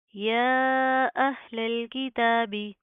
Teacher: کھڑا زبر ہے، مد ہے، لمبا کریں گے، کھینچ کر پڑھیں گے